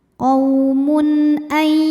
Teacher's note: Ada hukum izhar halqi ya. Karena ada tanwin dhammah menghadapi huruf halqi atau huruf tenggorokan yaitu hamzah. Maka tanwin kita bunyikan dengan n jelas